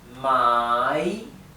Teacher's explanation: tienen que pronunciar bien claramente el tono de la a my o sea el tono es cae y sube